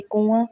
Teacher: تو کنویں میں بھی جو ہے وہ نون لکھا گیا ہے لیکن آواز نون گنہ کی آئی ہے